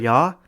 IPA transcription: jɑ